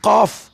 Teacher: زبان کی جڑ تالو کے نرم حصے پر لگائیں اور موٹا قاف ادا کیا کریں